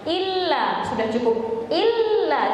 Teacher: lam yang ditasydidkan itu tidak dipanjangkan, melainkan jadi durasinya itu sama seperti kita membaca dua lam. Yang pertama sukun, yang kedua berharokat.